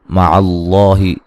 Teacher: لفظ اللہ کو موٹا ادا کریں گے، پہلے حرف پر زبر ہے